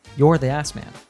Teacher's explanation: Usually in a statement like this, we would reduce are and contract it.